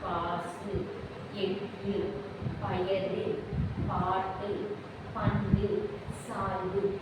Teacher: சொல்லின் இறுதியில் வரும்போது ஒரு மாத்திரைக்கு பதிலாக அரை மாத்திரை அளவே ஒழிக்கிறது. இந்த 6 வல்லின உகரங்களுமே வந்து சொல்லின் இறுதியில் வரும்பொழுது எல்லாமே அது வந்து குறுகி ஒழித்து ஒரு மாத்திரை அளவிலிருந்து அரை மாத்திரை அளவாக அது ஒழிக்கிறது. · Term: குற்றிய லுகரம்